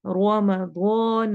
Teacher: रो मोटा, दो मोटा और साथ अलिफ मद्दा हो रही है, अलिफ को भी हम यहाँ पर मोटा पढ़ेंगे